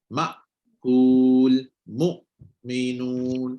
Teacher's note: So Hamzah keluar dia jelas dan dia kalau dia sukun dia akan sekat. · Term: tertahan suara